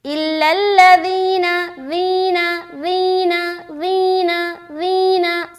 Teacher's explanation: تو تینوں حرف الگ الگ ہیں، جیم ذال زا، تو سمجھ آ رہی؟ ذال میں سیٹی والی آواز بالکل نہیں آئے گی